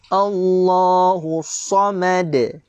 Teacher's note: Huruf sad baris atas ini dia tebal tuan-tuan. Dia ada sifat isti'la, tebal. Bila tebal, kadang-kadang orang selalu membacakan huruf selepasnya mengikut sifat yang ada pada huruf tebal sebelum dia. · Mim tidak ada sifat tebal. Maka mim bunyi secara nipis sahaja tuan-tuan.